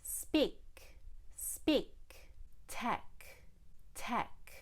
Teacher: when I have a K at the end of the word, I need to let a little bit of air come out. I need to use the back of my tongue.